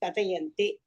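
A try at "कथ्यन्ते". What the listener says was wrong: கத்தியந்தே. கத்த சொல்லக்கூடாது, ஏன்னா இது கத்தியந்தே அப்படின்னு சொல்லும் பொழுது அதோடைய இதே மாறிடும்.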